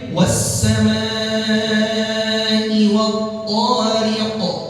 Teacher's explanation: Huruf qaf termasuk huruf qalqalah. Karena ini di akhir, jadi qalqalnya qalqalah kubra. Di qalqalahin, dijelasin, dipantulin.